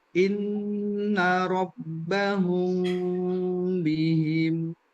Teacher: Ikhfa artinya juga samar atau dengung, ya. Mim mati bertemu dengan ba. · di ikhfa safawi, kita akan bacanya juga berdengung